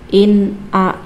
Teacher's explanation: karena ada nun sukun bertemu dengan huruf idhar, yaitu alif dibaca jelas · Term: idhar halqi